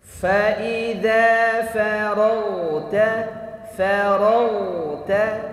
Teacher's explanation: ada ghain sukun, kemudian harus dialirkan suaranya, ya, kemudian tebal